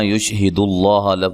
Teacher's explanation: یشہد اللہ لفظ اللہ کو موٹا ادا کرنا ہے، پہلے پیش ہے